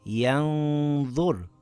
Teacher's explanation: I slightly hid the noon and kept the nasal sound on the makhraj of the next letter. I lengthened it for two counts with a heavy nasal sound. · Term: ikhfa